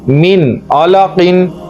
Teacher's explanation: हम गुना नहीं करेंगे बल्कि हम नून को पूरा पढ़ेंगे क्योंकि नून के बाद आइन आया हुआ है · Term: इजहार